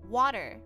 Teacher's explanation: a t is at the beginning of the second syllable um it's changed into a d